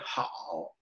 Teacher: when people hit the very bottom of their voice, it just like cuts out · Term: third tone